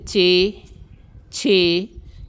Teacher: لسوی آواز جو تالو سے پیدا شدہ ہو, جیسے چے, چھے, یعنی ہمارا تالو جو ہے اس آواز کو پیدا کرتا ہے, یہ لسوی آواز کہلائے گی.